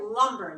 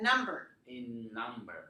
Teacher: keep your tongue on the na, going through your nose in number